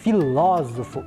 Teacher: nós temos a sílaba ló como a mais forte, né? Filósofo.